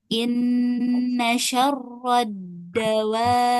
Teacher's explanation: walaupun dia tasydid, dia tetap harus di tahan dulu kemudian dipantulkan ya ketika kita bacanya dengan waqaf atau berhenti di sini. Oke. Dawab be ya ada beb-nya setelah ditahan. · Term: huruf qalqalah